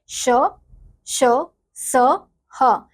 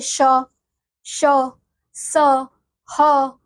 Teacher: क्या है यह हमारे अंतस्थ व्यंजन है अगला है उष्म व्यंजन इन व्यंजनों का उच्चारण करते समय प्राण वायु मुख से रगड़ उत्पन्न करती है करती हुई बाहर आती है जिसमें जिससे गर्मी पैदा हो होती